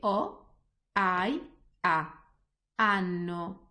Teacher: the H is there, but it's not pronounced at all. We completely ignore it. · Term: silent one